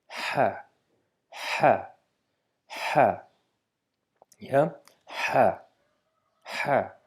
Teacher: we just need to stress a little bit in h sound to produce it from the middle part of the throat with much amount of air being pushed out from the mouth